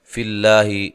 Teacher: لفظ اللہ کو باریک پڑھنا ہے، اس سے پہلے حرف پر زیر ہے